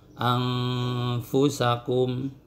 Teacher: ikhfa ausat yang suara dengungnya itu pertengahan antara akrob dan ab'ad.